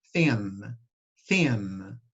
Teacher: vocês não vão falar igual o ágma, vocês vão falar N de verdade, tá? Não é ágma, é um N.